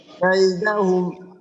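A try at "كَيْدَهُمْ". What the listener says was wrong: হ্যাঁ, এখানে টান দেব না আমরা, কাইদাহুম এমনটা যেন না হয়।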